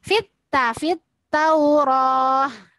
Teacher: lam sukun pada alif lam tidak usah dibaca, tapi langsung ke taknya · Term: alif lam syamsiyah